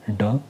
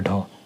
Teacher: जो आपका ड होगा ये आपका सघोष है और अल्प प्राण है, और जो आपका ढ है ये भी आपका सघोष है लेकिन ये महाप्राण है। देखो दोनों सघोष है लेकिन जो ड है ये आपका अल्प प्राण है और ढ आपका महाप्राण है।